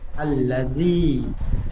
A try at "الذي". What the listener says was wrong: জাল ইয়াজের জি বেশি করে টান দিয়ে বলেন। আল্লাযী,